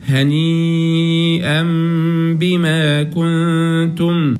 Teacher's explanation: لما نقرا الميم كمان بنجيب معاها غنه